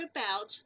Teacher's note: for the word about the accented syllable has a vowel diphthong